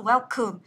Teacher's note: khi mà mình nhấn với âm đầu tiên ấy, thì cái âm thứ hai này mình sẽ đọc là âm ơ này. Tức là nó không được nhấn trọng âm thì nó sẽ đọc là âm ơ.